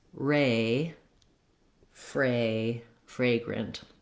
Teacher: tongue lifting for flagrant and of course for fragrant or fragrant you want the back of the tongue lifting for that r sound